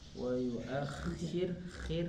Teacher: Roknya jadi tipis karena sebelum huruf roknya berharokat kasroh gitu ya.